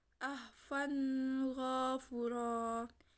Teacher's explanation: Cara membaca mat iwad ini juga seperti mat tobi'i, tetapi bunyi dari fathatain dihilangkan dan dibaca seperti fathah biasa